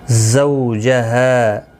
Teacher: زو اولین ہے، تھوڑا نرمی کے ساتھ کھینچ کر ادا کریں گے